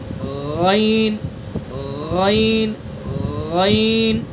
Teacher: اور غین غین کا مخرج ہے جو خا کا تھا، زبان ادنائے حلق یعنی حلق کا منہ کی طرف والا حصہ ادا کیجئے. غین غین غین.